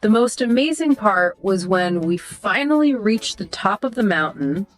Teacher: That rise on top and fall on mountain emphasizes the climax. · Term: rising falling intonation